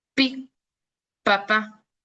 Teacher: el aire pues se bloquea completamente y luego se libera. Por eso es un sonido, de hecho, que se le conoce como oclusivo.